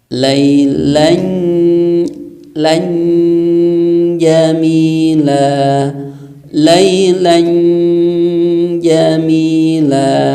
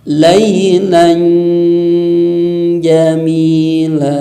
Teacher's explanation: ketika ada tanwin menghadapi huruf jim, maka suara n-nya itu tempelkan di huruf jim sehingga bunyinya mendekati seperti huruf an ya, an. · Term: tetap didengungkan